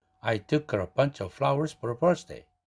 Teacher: 마지막 birthday에 1강세를 가져가고 나머지는 2강세로 다운시킵니다. · birthday 두 음절이지만 birth라는 첫 음절에 1강세를 줘야 되겠죠.